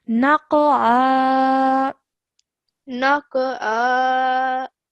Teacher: Really try and make that ayn sound from your throat